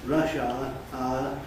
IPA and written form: ˋrʌʃ aə (rush hour)